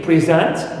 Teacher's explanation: I stress the second syllable in present